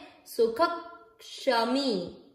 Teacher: आधे क को यहां मिक्स करिए, क्योंकि आधा है वो पिछले वाले पूरे अक्षर के साथ जुड़ता है अधिकतर। सुखक सुखक और श से षटकोण वाला यहां रखिए क्षमी, सुखक क्षमी। · विसर्ग ख में मात्रा अ की, तो क्या पढ़ा जाएगा, सुख ह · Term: आधा क और पूरा श